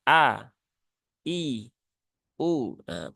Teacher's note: Hamzah bunyinya bukan Ha a i u tetapi bunyinya adalah a i u